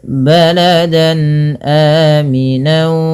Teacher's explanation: Jadi sama aja bunyinya kayak n gitu ya, baladan ya. baladan jelas n-nya karena bertemu dengan hamzah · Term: izhar halqi